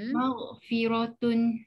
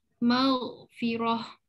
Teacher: Kalau kita baca baris dia bunyi macam bunyi huruf ta, tapi kalau berhenti automatik jadi huruf ha. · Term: ta marbutah